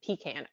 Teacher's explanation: i would put the emphasis on the second syllable